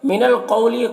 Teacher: قوف کو یہاں پر پر پڑھیں گے، حروف مستعلیہ میں سے ہے اور واو لین ہے، اسے نرم آواز کے ساتھ جلد پڑھیں گے